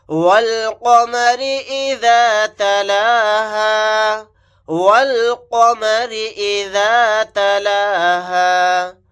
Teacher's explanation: واو کو لام ساکن کے ساتھ ملائیں گے، یہ الف نہیں پڑھا جائے گا۔ یہاں پر قاف کو موٹا یعنی پر پڑھیں گے